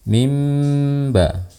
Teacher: mengganti suara nun menjadi suara mim. Oleh karena itu teman-teman bisa melihat di situ ada mim kecil di atas huruf nun. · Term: iqlab